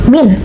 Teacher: Dibaca min karena hukum tajwidnya izar khalqki karena ada nun mati bertemu dengan hamzah dan dibaca dengan jelas